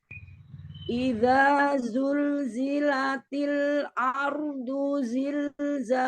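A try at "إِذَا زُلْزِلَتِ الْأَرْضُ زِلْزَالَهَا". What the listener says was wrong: Iya, jangan Nah, jangan diangkat ketika A-nya sama lamnya. Idza zulzilatil ardu zilzalaha. Sama posisinya, lidahnya turun ketika lam dan hamzah.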